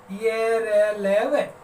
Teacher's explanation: क्योंकि इनका उच्चारण स्वरों के जैसा है, क्योंकि हवा स्वतंत्र रूप से बिना किसी बाधा के बाहर निकल रही होती है, ऐसा हमें अनुभव होता है। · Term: अर्ध स्वर